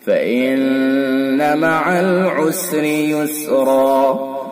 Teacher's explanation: نون حرف مشدد ہے. نون جو ہے یہ مشدد ہے تو اس کے اندر حرف غنہ ہوگا